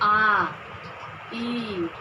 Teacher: इन 4-5 स्वरों को बोलने के लिए आपके ओठ में गोलाई नहीं आ रही है, या आपका ओठ गोल नहीं हो रहा है, गोलाकार नहीं हो रहा है, इसलिए इन स्वरों को बोलने के लिए हमारे ओठ गोल नहीं हो रहा है, इसलिए इनको हम अवृत्तमुखी कहते हैं।